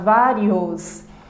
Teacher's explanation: eu também tenho a pronúncia do O propriamente dito, fechado, vários, e não vários, como é o som da letra U.